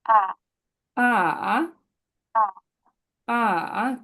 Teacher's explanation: টোনটা হচ্ছে নিচে নেমে উপরে যাবে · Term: ফলিং প্লাস রাইজিং